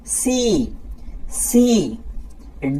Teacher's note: আমরা যখন সি বলবো একটু মুখ দিয়ে শীষ বের হয়ে যাবে।